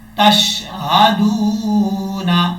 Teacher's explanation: اب اس کے بعد جو دال ہے، دال کو واو سے ملائیں گے، جب دال کو واو سے کنیکٹ کریں گے، ملائیں گے تو 1 الف کی مقدار لمبا بھی کریں گے، دال واو پیش دو، نون زبر نا، تشہدون، وقف جب کریں گے تو نون ساکن کر دیں گے، پھر پڑھا جائے گا تشہدون۔